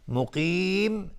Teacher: مقیم، قاف از حروف استعلاست غلیظ تلفظ میشه. مقیم مد عرض للسکون به مقدار 2 یا 4 یا 6 حرکت میتونیم مد بدیم